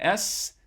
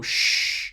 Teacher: you can contrast that by making an ss and that cool spot should be a little bit further forward in your mouth than a shh